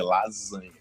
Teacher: É com S, mas a gente não fala lasanha com som de S normal, a gente fala com som de Z